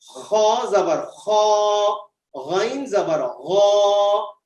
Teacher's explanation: غین حلق کے اوپر سے ادا ہوتا ہے. خا اور غین یہ 2 حروف حلق کے اوپر سے ادا کیے جاتے ہیں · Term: حروف حلقی